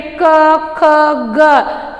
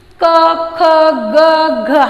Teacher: हमारी जो जीवा होती है, मुंह के अंदर जो जीवा होती है वो यहाँ कंठ को स्पर्श कर कर ध्वनियों को बाहर निकालती है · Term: कंठ्य